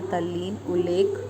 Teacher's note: ता के बाद ला होने पर ता का ला हो जाता है, जैसे तल्लीन, उल्लेख।